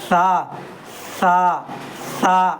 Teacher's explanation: سا اوپر کا دانت کا نوک اور زبان کا نوک کو ملائیں گے تو یہ سا نکلے گا.